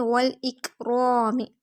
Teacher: ذو الجلال، وا ہونٹے کی گلائی سے وا کو لام سے ملائیں گے، نیکسٹ حمزہ کو کاف سے ملائیں گے، کاف باریک، والاک، رو پہ زبر موٹا ہوگا اور ایک الف برابر لمبا، الف مد، میم کی زیر کو کھینچیں گے نہیں، والاکرام۔